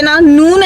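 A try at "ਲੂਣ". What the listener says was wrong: ये देखो फिर नून कह रही है। नून नहीं है, लून है।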